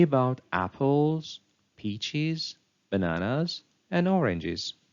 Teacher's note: the pitch of the voice Rises slightly on each noun of the list indicating that we are not yet finished speaking on the final · On the final noun of the list, we find a familiar rise-fall intonation. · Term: continuation rise